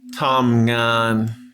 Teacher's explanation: two syllables same thing two flat tones